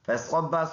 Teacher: فَصَبَّ صاد پر ادا ہونے والا حرف ہے، اور با اور صاد کو ملا کر پڑھیں گے، شد کی وجہ سے با جماؤں کے ساتھ پڑھیں گے